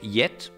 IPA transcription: jet